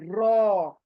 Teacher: यानी आपकी जुबान है ना, किनारे से दांतों के मसूड़ों को लगेगी, साइड से, साइड से, और ये मोटा लेटर अदा होगा